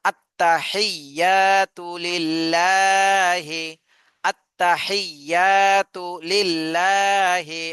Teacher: আত্তাহিয়া তাতে টান দেয়া যাবে না